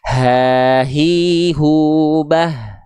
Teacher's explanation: H besar itu cukup teman-teman rasakan keluar dari pangkal tenggorokan atau tenggorokan paling bawah